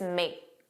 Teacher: Notice he didn't say don't, he just said don't. And then make, you didn't hear that k, it was just make.